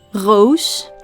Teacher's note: in the southern part of the Netherlands we pronounce the r as a throat noise the so-called French R Rose the northern part however pronounces the